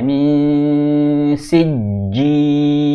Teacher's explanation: nun sukun ketemu syin namanya ikhfa ada gunanya